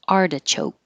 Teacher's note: spinach artichoke the T changes to a d artichoke